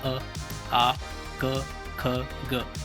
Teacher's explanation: जैसे कंठ वर्ण, कंठ यानी कि हम जो कंठ से जो वर्ण आते हैं, जैसे अ, आ, क, ख, ग, जब आप इनको बोलेंगे तो आपके कंठ का प्रयोग होगा, तो ये कंठ वर्ण कहलाते हैं।